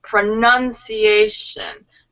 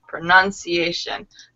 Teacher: The emphasis is on the nun.